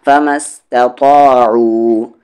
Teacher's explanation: تا پہلے لائٹ پھر یہ طا ہیوی